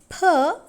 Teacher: the sound per is also voiceless. Voiceless means there is no vibration of vocal cords. So it is bilabial plus stop plus voiceless.